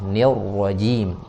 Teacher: Ro-nya tebal, tafkhim. Nir rajim karena berharokat fathah.